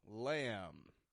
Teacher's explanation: notice I'm not pronouncing the B at the end of the word lamb I'm just making the M sound lamb so the meat from